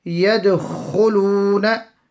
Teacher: Ghunna on the noon, and straight after we have a maddi asli that will be made long for 1 second. Qalqala on the dal, small echo sound on the dal. Yadkhuluna, and the kha will be read full because of the dhamma, the pesh on it.